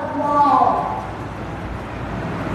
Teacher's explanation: দুই ঠোঁট হতে উচ্চারিত হয় মুখ গোল করিয়া